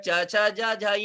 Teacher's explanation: ये तालु से बोले जाते हैं